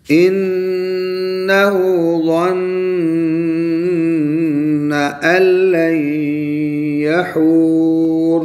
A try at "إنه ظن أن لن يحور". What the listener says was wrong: اور دونوں گنے آپ نے چھوڑ دی إنه پر ظن دو اور تین گنے چھوڑ دی